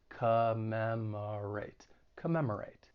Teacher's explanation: that first and third syllable have that schwa sound, that unstressed vowel sound, which sounds like a.